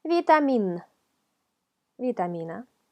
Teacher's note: un sonido que se forma con ayuda de los dientes superiores con el labio inferior